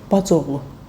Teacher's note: Birinci sözün son sait düşür, o biri sözü isə olduğu kimi qalır.